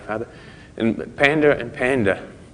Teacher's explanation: Americans pronounce those two differently because they have this rhotic accent where they pronounce the R's basically